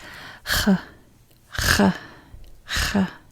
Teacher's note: It's in the back of your throat. Almost like someone's grabbing you and you're being choked.